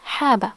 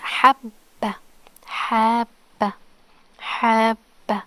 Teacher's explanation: The ba is pronounced only one time, but with shadda it's habba. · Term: The ba is doubled